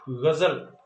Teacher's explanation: जब हम ग का उच्चारण करते हैं तो जीभ का मुंह में कहीं पर भी स्पर्श नहीं करना है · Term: संघर्षी